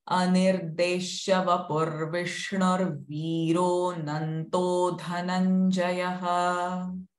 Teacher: Vapu, Vishnu, again they are pu and shnu are rasva sounds, but viro is dirgha sound. So accordingly we need to give time for these syllables.